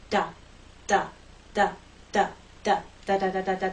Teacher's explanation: we're going to do it quickly, we're going to use our voice, and we're going to make sure there's no release of that air in a puff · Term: flap T